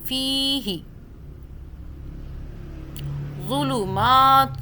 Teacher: مدہ، مدہ کا مطلب کھینچنا، فا یا زیر فی پڑھ رہے ہیں، 1 الف کے برابر کھینچ رہے ہیں